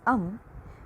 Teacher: when you pronounce um you feel the vibrations around the nasal cavity